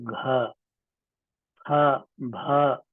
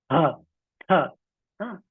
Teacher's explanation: हाँ, तो ज्यादातर एक लघु प्राण फिर एक महाप्राण होता है, जैसे क, उसके बाद ख, ख महाप्राण है, हाँ, ग के बाद घ, ख, भ, हाँ, ह, ये महाप्राण। इसमें जो है महाप्राण कहते हैं, प्राणवायु ज्यादा निकलती है। तो इसको थोड़ा गहरे से उच्चारण करें।